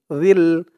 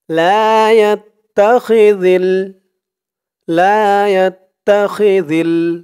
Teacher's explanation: আর জালের আওয়াজটা একদম নরম পাতলা করতে হবে। জিহ্বার মাথা ওপরের দাঁতের মাথার সাথে লাগবে জালের উচ্চারণটা করার সময়।